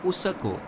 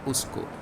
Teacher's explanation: several language have schwa in them Nepali for example would call this word usako and not usko